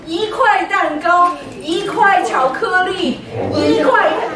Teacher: One changes to second tone.